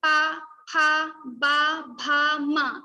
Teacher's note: So our tongue will touch our lips. So pa, pa, not tongue will touch, but our lips, like above lip and the next other one, they both will touch each other. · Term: pa varga